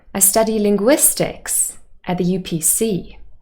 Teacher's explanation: We knew already that the person was a student and that they were studying at university, but the new information is the subject they're studying, linguistics. So that word, linguistics, stressed on the third syllable, would receive the main stress because it is new information. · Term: new information stress